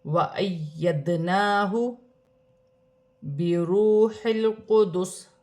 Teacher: دال ساکن ہے، دال حرف قلقلہ میں سے ہے، قلقلہ کے ساتھ ادا کیا جائے گا